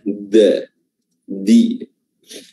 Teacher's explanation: Jadi ujung lidah ini bertemu gusi dan juga bertemu dengan gigi. Jangan gusi saja. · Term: makhraj huruf dal